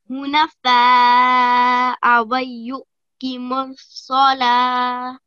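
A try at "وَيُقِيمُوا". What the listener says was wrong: Awayuqi. Okay, so don't join the U and the Qi, okay? They're not joined by a tashdeed or a jism, okay?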